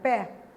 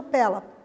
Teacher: o som do E continua aberto para a primeira sílaba